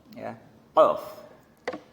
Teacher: pangkal lidah mengenai langit-langit yang di atasnya menjadi makhrajnya huruf qaf